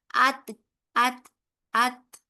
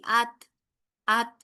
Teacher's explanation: تا میں ایک ہلکا سا ہماری آواز کے ساتھ ساتھ ہماری سانس بھی جاری رہتی ہے، ٹھیک ہے. اس لیے جب ہم اس کو ختم کرتے ہیں نا، ات ات ات، تو آپ کو ایک ہلکی سی ایئر آپ کو باہر آتی ہوئی محسوس ہوگی، ات ات.